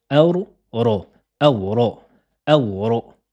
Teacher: On va appliquer la règle du idgham, l'assimilation. On va assimiler la lettre Noun sur la lettre Ro. C'est comme si elle allait disparaître. On va prononcer 2 fois la lettre Ro et on ne va pas appliquer de Run.